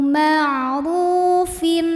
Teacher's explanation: tanwin kasrah yang menghadapi huruf halq atau huruf tenggorokan yaitu Hamzah maka tanwinnya dibaca n jelas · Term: izhar halqi